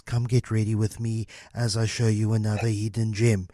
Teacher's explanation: what is known as ASMR voice where it's these lower pitches